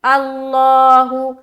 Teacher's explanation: لفظ اللہ کا لام کیا ہوگا؟ پر ہوگا. کیوں؟ کیونکہ لفظ اللہ کے لام سے پہلے کیا ہے؟ زبر ہے. تو یہاں پر منہ بھر کر بولیں گے